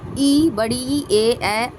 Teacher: ई, बड़ी ई, ए अग्र स्वर है क्योंकि इनके उच्चारण में जीभ का अगला भाग कार्य करता है।